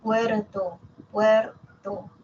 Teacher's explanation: la vibrante simple que es como un solo tap como un solo golpe